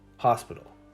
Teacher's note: in the word hospital the first syllable was held for longer